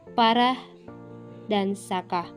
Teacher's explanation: huruf a pada umumnya yang bercirikan rendah depan dan tak bulat